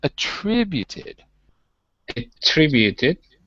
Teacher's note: Attribute is not the same as attributed. When it's a verb, right, when it's an action, we switch the syllable to the second.